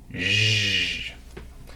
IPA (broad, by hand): ʒ